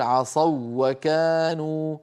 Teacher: الواو الأولى ليست مادية، هي واو لينية قبلها مفتوح، لذلك ساغ الإدغام فيها فنقول عصوا وكانوا، فنشدد الواو الثانية، هذا علامة الإدغام.